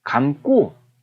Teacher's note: 기역이 쌍기역으로 바뀌는 된소리 대기 현상이 일어나잖아요.